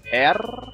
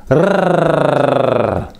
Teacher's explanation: This is an alveolar trill, made by putting the tip of the tongue against the alveolar ridge and letting the tongue vibrate.